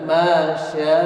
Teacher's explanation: Sya ini 4 ketukan, ya, atau 2 ayunan.